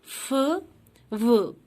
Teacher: those with lip to teeth contact are called labiodental.